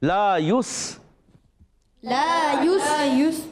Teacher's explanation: اور پھر لا یسأل، لا کو ایک الف کھینچیں گے، یس یا کو سین سے ملائیں گے، یا پر پیش ہے، سین ساکن ہے، سیٹی کی آواز آئے گی. لا یس.